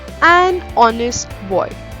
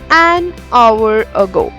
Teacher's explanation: Though the spelling is having H in the beginning, but H is silent and it is giving a vowel sound O, so that's why we have used an before it. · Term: silent consonant H